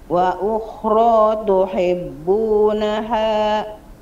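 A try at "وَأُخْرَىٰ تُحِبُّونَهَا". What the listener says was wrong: Lanjut.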